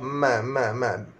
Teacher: Syafatan mim, bibir atas sentuh bibir bawah ma. Sentuhan ringan ma.